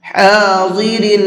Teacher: ضاد کو منہ بھر کے پڑھیں گے